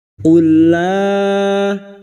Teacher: Qul la pertemunya 2 huruf yang sama. Yang pertama sukun yaitu huruf lam idgham mislain. Masuk pada huruf lam berikutnya. Qul la pertemunya mad dengan hamzah di lain kalimat mad jaiz munfasil 5 harakat kita panjangkan.